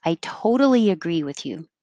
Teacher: you say toe totally you're stretching the o um i toad the t in the middle changes to a d